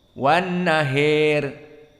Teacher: Maka Abu Amr wal Kisai kilahuma qara'a wan nahiri bil imalah al-kubra. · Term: al-imalah al-kubra